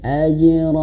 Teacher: pantulkan huruf jimnya harus jelas